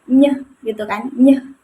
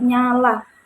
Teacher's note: Nah, konsonan ny ee ketika diucapkan itu ee termasuk pada proses nasal karena udara keluar melalui hidung.